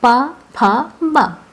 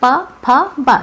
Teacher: ये ओठ के द्वारा ही हमारे दोनों ओठ जो हैं एक दूसरे में चिपक रहे हैं